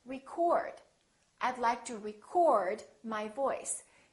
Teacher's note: the O is fully pronounced it's prolonged and it's stressed and this part now becomes short it almost disappears and it